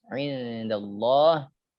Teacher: Allah ismul jalalah. Ya mufakhamah atau dia ditebalkan.